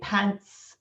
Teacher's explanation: if you say pants, it's got a short front vowel